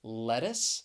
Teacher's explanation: the c has really an s sound in that final syllable · the T, I am going to pronounce it with more of a flap T sound because I'm from the United States. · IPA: ˈlɛt ɪs